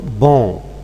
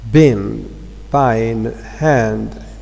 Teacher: So the vowel O, it becomes nasalized on. This is due to the influence of the following sound n.